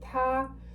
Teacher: it is the flat tone, so we just keep the same note in a sense